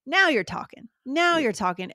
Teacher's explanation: no we emphasize the now